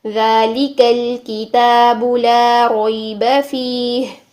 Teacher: فِيهِ، ذَلِكَ، یہاں پر لی جو لام ہے باریک، ٹھیک ہے، الکتاب کا لام بھی باریک، ہر لام یہاں پر باریک ہی ہے